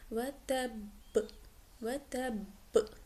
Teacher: قلقلہ ہوگا، جس کی انٹینسٹی زیادہ ہوگی، جما کر پڑھیں گے